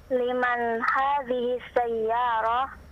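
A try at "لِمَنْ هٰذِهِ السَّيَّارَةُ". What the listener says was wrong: Hidupkan semua harokatnya.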